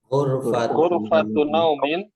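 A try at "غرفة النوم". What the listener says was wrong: Di sini naumin. Ya, yang Anda bilang harokatnya harus kasroh. Dan di sini kata pertamanya nggak boleh tanwin. Jadi kita bacanya ghurfatu naumin.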